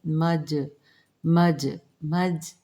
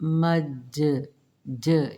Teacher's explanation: مجمع مج، جیسے با پر قلقلہ ہے یہاں پہ جیم پر بھی قلقلہ کیا جائے گا، جیم پر جزم قلقلہ، تھوڑا نمایاں پڑھیں گے۔ مج مج مج، نارمل نہیں پڑھیں گے، مج ج، یہ ہوتا ہے قلقلہ نمایاں کرنا۔